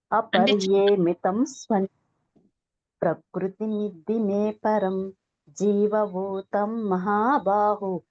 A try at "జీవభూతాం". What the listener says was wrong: భూతం కాదు, భూతాం. దీర్ఘం ఉంది, తాకి దీర్ఘం ఉంది, సున్నా ఉంది. భూతాం అని చదవండి. జీవభూతాం.